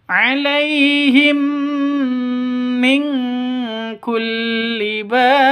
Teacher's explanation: Cara bacanya masuk ke mim. Yang kedua ditambah dengan dengung. Disertai dengung dua ketukan. Karena bacaan idgham mimi seperti itu ya.